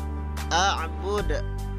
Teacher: huruf Dal ini termasuk huruf Qalqalah ya jadi memantul